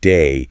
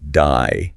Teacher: the a sound in a word like day can sound a bit more like die